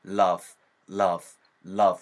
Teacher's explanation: V, E 사운드로 끝나는 녀석들은 윗니가 아랫입술을 붙잡은 상태에서 바람이 훅 하고 나오면 됩니다